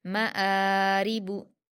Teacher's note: रा पर ज़ेर की हरकतें जल्दी पढ़ेंगे, बारीक पढ़ेंगे, बा पर हरकतें जल्दी पढ़ेंगे।